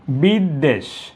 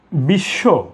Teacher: শব্দের মাঝখানে বা শেষে বফলা থাকলে ব এর উচ্চারণ হবে না। যার উপর আশ্রিত সেই বর্ণটি দুইবার উচ্চারিত হবে। বিদ্বেষ। একইভাবে আমি বলি যে বিশ্ব।